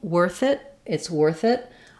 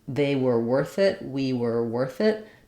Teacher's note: even though it's two separate words worth it I do link them together